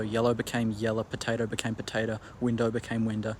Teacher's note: it was generally characteristic of more broad varieties of Australian English words that ended with an o sound like window potato yellow had their um final o sound replaced with an e r